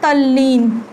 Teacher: जब त ल से मिलता है तो क्या बन जाता है, त भी आधा ल में परिवर्तित हो जाता है। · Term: त संबंधी नियम